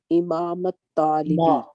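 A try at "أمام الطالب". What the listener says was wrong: Not Imam, Amam at-Talibi.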